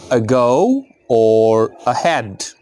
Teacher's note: it's the schwa, it's a very short sound as in the first part of the word ago or ahead